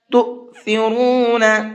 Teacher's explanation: تو کے حمزہ کو جھٹکے کے ساتھ میں پڑھنا ہے، تو اس طرح سے، اس لیے کہ حمزہ ساکن کے پڑھنے میں جھٹکا ہوتا ہے اور یہاں پر یہ حمزہ ساکن ہے۔